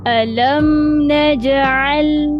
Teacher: Lam berjumpa lam, dia ada hukum idgham. Dia masuk terus pada huruf bersabdu.